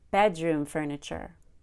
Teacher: when I said bedroom furniture I had a lot of energy on the word bed bed and then on room I relaxed bedroom bedroom so what I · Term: compound noun